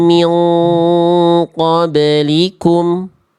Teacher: Bunda udah bagus ikhfa hakikinya itu bunyi nunnya udah disamarkan, udah didengungkan, udah ditahan dua harakat